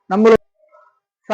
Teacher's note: மேல் பல்லு கீழ் பல்லுக்கும் நடுவுல நாக்க வச்சு சொல்லணும்